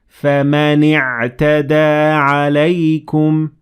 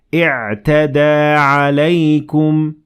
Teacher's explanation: I connected the noon to the ayn